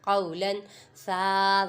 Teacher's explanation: قاف پہ واولین ہے، لام پہ تنوین ہے، تنوین کے بعد حروف اخفاء میں سے سا آ رہا ہے، ادھر گنہ کریں گے کیونکہ ادھر اخفاء کا قاعدہ ہو رہا ہے